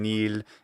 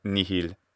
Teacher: And he's also saying nil, the contracted form of nihil. That intervocalic H is in fact attested as having been removed in speech